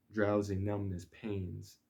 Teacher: two stressed syllables spaced out between a very small lightly pronounced syllable